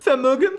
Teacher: they pronounce the V's with an F sound